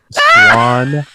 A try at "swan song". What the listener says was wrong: Swan song. You said swank. I don't even know what you said. You said swank song.